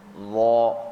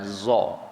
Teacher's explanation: Hujung lidah sebut sama macam huruf zal, tapi bezanya itbaq, dia membulat. Gitu. Kalau huruf zal dia infitah, dia buka za gitu.